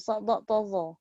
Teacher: kita menyebut huruf sad, dad, ta, za tu penuh kita punya mulut. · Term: Isti'la dan itibaq